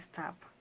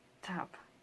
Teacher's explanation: the sound t as in stop and the aspirated form t as in tap are allophone of the phoneme t